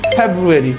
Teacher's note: ফ সাউন্ডটাকে প্রনাউন্সিয়েশন করার জন্য আমাদেরকে উপরের দাঁত নিচের ঠোঁটের উপরে লাগিয়ে উচ্চারণ করতে হবে